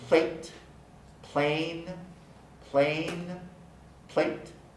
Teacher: you can hear a difference in the length of the vowel a in plate plain plain plate the vowel is lengthened before the voice that guy · The vowel is lengthened before the voiced n. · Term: vowel lengthening